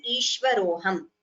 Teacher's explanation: While chanting, we chant it together without any split in between as Ishvaroham. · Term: Purva Rupa Sandhi